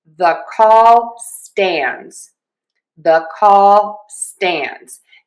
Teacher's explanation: And we are going to stress stands. · This is a rule that we use most of the time in English in connected speech. and we reduce the 'the' and we pronounce it with a schwah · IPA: /ðə kɔl stændz/